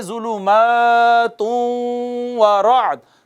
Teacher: تن کا جو نون ہے اس کا ادغام ہو گیا واو میں، تبھی تو واو مشدد ہے، تو پڑھیں گے ظلمات ورعد، تم و، ایک الف جتنا اس پہ ادغام غنہ کرنا ہے ہم نے، ادغام بالغنہ ہو گیا۔